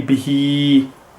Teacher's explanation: So we do just prolong the kasra as if it was along like a haruf madda, like we're just prolonging it. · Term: standing kasra